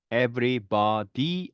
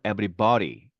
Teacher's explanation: 네, flapping입니다. 그러니까 르 발음에 가깝습니다.